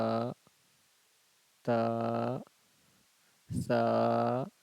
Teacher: ता है जुबान की नोक और जो ऊपर का जो दांत है उसके जड़ से जुबान की नोक को सटाएंगे तो तादा हो जाएगा। सा जो है जुबान की नोक और ऊपर का जो दांत है उसका कनारा इन दोनों को एक दूसरे के साथ टच करेंगे तो सादा हो जाएगा।